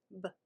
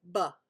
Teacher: It's that short kind of clipped sound b, where the lips just come together. B. But it's really easy to say ba, but it's b.